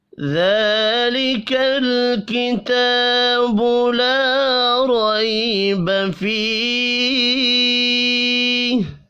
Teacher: الف لام میم، ذلك الكتاب لا ريب فيه۔ ذالک، ذال کے اوپر کھڑی زبر ہے، 1 الف کے برابر کھینچ کر پڑھیں گے، لام ساکن پر قلقلہ نہیں کرنا